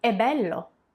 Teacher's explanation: you hear actually how that uh e is open